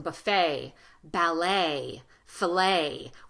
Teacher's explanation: Sometimes in American English, the letter T is silent or not pronounced.